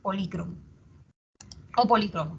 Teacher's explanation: Esa palabra polícromo tiene doble acentuación